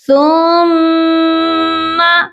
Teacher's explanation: میم کو کھینچنا نہیں ہے، صرف یہاں پر غنہ کریں گے